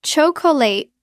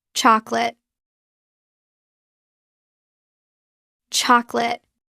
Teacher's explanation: Native speakers drop the second O. It becomes just 2 syllables.